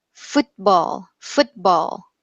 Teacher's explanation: So we make the T formation with our tongue. We make the tongue position, but the t, part does not sound. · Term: reduced T